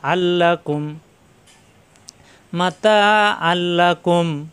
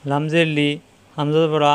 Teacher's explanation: তানবিনের পরে আসছে লাম তাসদিদ ধরে গুন্না ছাড়া মিলিয়ে পড়তে হবে